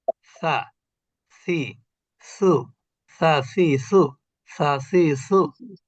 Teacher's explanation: এইটা হলো জিহ্বার আগা উপরের দাঁতের আগা